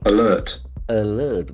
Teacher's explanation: Letter A has got a sound. Then the middle R is silent.